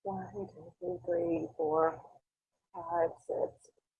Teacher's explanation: This is an example of a patient with abductor spasmodic dysphonia. And you can hear those breathy breaks.